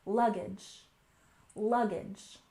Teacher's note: finally we have luggage we stress the first syllable